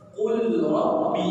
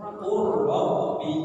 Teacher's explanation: Rohnya ditasdid, maka lamnya tidak dibaca.